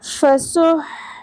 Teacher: حا وسط حلق سے ادا ہوگا · سین میں سیٹی کا ایلیمنٹ کلیئر ہوگا اور آگے آ رہا ہے ہا، ہا وسط حلق سے ادا ہوگا، ٹھیک ہے؟ جس میں آپ نے اس چیز کا خیال رکھنا ہے کہ یہ ہا کی ساؤنڈ نہ نکلنے پائے ورنہ تبدیل حرف ہو جائے گا، حرام غلطی ہو جائے گی، معنی بدل جائیں گے، اس کی اجازت ہرگز نہیں ہے۔